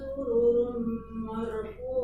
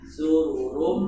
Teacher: sururun ketemu mim itu bil gunnah. Itu kalau ditinjau dari maratibul gunnah, bobot gunnah, itu bobot gunnah yang paling tinggi.